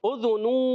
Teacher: اذنو، اب دیکھیں حمزہ پر بھی پیش، یہ الف نہیں حمزہ ہے، ذال پر بھی پیش اور یہاں پر بھی دو پیش۔ یاد رکھیے جب پیش ادا ہوتی ہے یا دو پیش ادا ہوں گے ہونٹوں کی گولائی سے